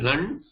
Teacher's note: the lakara is nasalized here